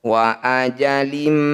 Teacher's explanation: bunyi kasr tanwinnya masukkan pada mim bibir langsung rapat dengungkan dua harakat